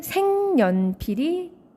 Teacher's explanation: 네, 비음화가 일어날 수 있는 조건을 만족하고 있어요. 기역 다음에 온 그 니은 때문에 기역이 같은 조음 위치의 비음인 이응으로 바뀌게 되죠.